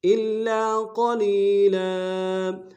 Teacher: وقف میں تنوین کو الف سے بدلیں گے